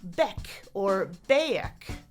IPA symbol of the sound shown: bɛk